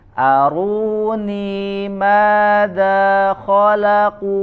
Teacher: Ru, ni, ma, da, u. Ya, ada 5 huruf yang dibaca panjang, maka semuanya harus dibaca sama, konsisten 2 harokat.